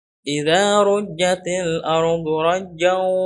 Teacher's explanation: dimasukkan ke huruf waw dan ada dengungnya. Masuk ke al-khayshum, ke rongga hidung. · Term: idgham bigunah